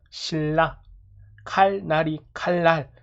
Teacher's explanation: 니은인 비음이 유음, 리을의 앞 또는 뒤에서 나와서 유음인 리을로 바뀐다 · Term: 유음화